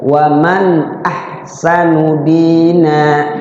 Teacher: Waman nun mati ketemu alif idhar. Jadi nunnya nggak boleh dibaca samar, harus dibaca jelas. Ya, karena bertemu huruf idhar.